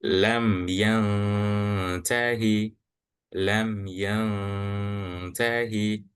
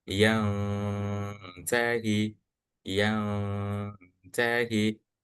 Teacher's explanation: menyamarkan nun sukun atau tanwin dengan suara ditahan. Lalu disertai dengan gunnah atau dengung selama 2 sampai 3 harokat. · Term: ikhfa hakiki